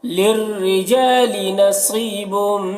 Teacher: را کو باریک پڑھنا ہے اور جا میں الف مدہ ہے